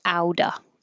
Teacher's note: This T will connect almost out. And then the T on out will change to a D.